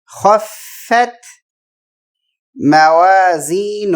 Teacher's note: خا موٹا پڑھیں گے